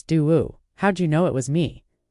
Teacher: the intonation would typically rise at the end indicating a question